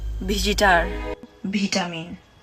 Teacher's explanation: according to these examples Visitor becomes Bhisitar and vitamin becomes Bhitamin the transformation here isn't V to B but V to Bh